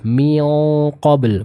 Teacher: kita tahu qaf adalah huruf yang tebal, maka dengungnya pun akan ikut terbaca dengan tebal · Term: ikhfa